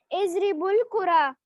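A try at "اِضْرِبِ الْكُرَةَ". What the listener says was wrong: बेटे जबर है, अद्रिबुल कुरा, ठीक है। अगर मैं कहूँ इद्रिबु, ये देखें इद्रिबिल है ना, यहाँ बा के नीचे जेर है, मैंने कल भी आपको समझाया था।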